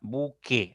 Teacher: buque suena directo la e la u pasa desapercibida entonces no hay un diptongo acá excelente trabajo qué pasa con